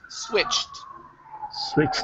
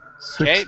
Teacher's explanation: the CH is unvoiced. Okay, so the ED will sound like a T.